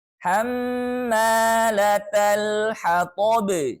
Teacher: Nah, kita hukumi dengan gunnah. Artinya kita membacanya harus ditahan 2 harokat beserta dengung atau gunnah ya. Masuk ke hidung, khayshum, rongga hidung.